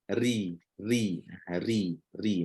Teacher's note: semua ro yang berbaris kasrah ni Semuanya perlu dibaca dengan nipis